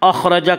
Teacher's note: خا کو پر پڑھیں گے، خا حروف مستعلیہ میں سے ہے۔ حروف مستعلیہ 7 ہیں جن کا مجموعہ خصہ ضغ تنقیض ہے، جو ہمیشہ ہر حال میں پر پڑے جاتے ہیں۔